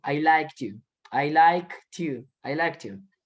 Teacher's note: Miren cómo pronuncio la K y la T la pego con el U